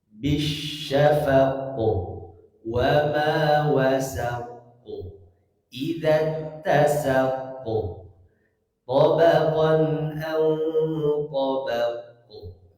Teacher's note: Jadi qofnya memantul tapi jangan berlebihan juga hadirin. · itu diakhiri dengan huruf qaf sukun, waqaf. maka dibaca qalqalah. Jangan lupa untuk membacanya dengan memantul. Bisyafaqu wa ma wasaqu idza tasaqu tabaqan aw tabaqu.